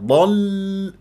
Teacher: فقد فقد والضاد من احرف الاستعلام وفخم مرتبه الثانيه لانها مفتوحه واللام مرققه مشدده ما اطيب جريان الصوت فيها